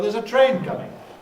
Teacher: so there's a train coming. So we emphasize train.